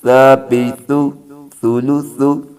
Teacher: یہ جو سا ہے یہ سیٹی کے بغیر ہے۔ سا اور زال ایک جگہ سے ادا ہوتے ہیں، ان کا ایک مخرج ہے۔